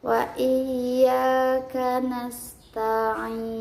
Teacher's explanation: ada sin yang mempunyai sifat hamas dan sofir